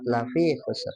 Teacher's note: Lafi dipanjangkan ya dua harakat.